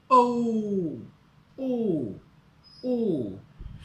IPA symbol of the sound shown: ɔː